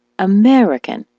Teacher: the word American as you know is stressed on the me